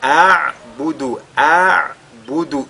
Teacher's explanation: Et a'budu, en lisant, nous avons d'abord le hamza avant le ayn. · Donc il faudra que le hamza et le ayn soient lus et que les deux ressortent dans la lecture clairement.